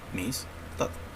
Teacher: Amistad lleva la mayor fuerza de voz en la última sílaba, en tat. Si esta es la sílaba tónica, entonces el resto ya serán sílabas átonas.